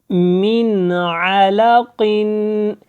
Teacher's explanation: یہاں پہ دیکھیں، میم نون زیر من، عین زبر ا، لام زبر لا، قاف دو زیر قن، من علق۔ اب یہاں پہ من کے اوپر ہم نے اظہار کیا، غنہ کے بغیر کیا، اخفا نہیں کیا · غنہ اور اخفا اس لیے یہاں پہ سمجھایا گیا ہے کہ آواز کو زیادہ دیر آواز جو ہے ناک میں نہیں آپ نے لے کے جانی، اور اس کو زیادہ دیر نہیں ادا کرنا